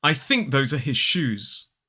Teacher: are his shoes I think those are his shoes Okay so think has the unvoiced sound those has the voiced sound now let's look at this sentence his mother told him to